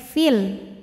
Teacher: Namun panjangnya hanya saat berhenti. Kalau wasal madnya gugur, fi-nya pendek, fil. Kenapa? Karena ada pertemuan dua sukun. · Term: takhallus bil hadfi